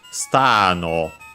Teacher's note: so it's low, high, low, yeah, the word I'm pretty sure doesn't become unaccented in this case.